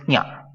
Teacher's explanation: When this nasal touches the palatal, it's nya.